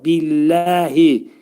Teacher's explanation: Allah kəlməsindən qabaq kəsrə gəldiyinə görə ləfzi cəlalə oxunacaq. Yəni incə oxunacaq.